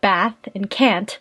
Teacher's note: Another feature would be the trap-bath split, meaning certain words, like bath and can't, are pronounced with a broad A in the word father.